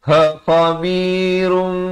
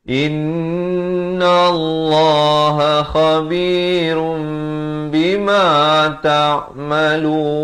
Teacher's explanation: Baik, di sini hukum iqlab. Tanwin bertemu ba. Asalnya run, tapi datang ba jadi rum. Dua harakat.